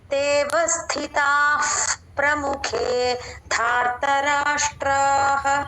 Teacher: తేవస్థితాః అక్కడ విసర్గ ఎఫ్ లా చెప్పాలండి